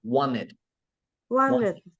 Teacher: Là người Anh người ta đọc vậy, còn người Mỹ lại chữ tờ tiếp. Nếu mà chữ tờ kế bên chữ N thì người ta bỏ chữ tờ luôn.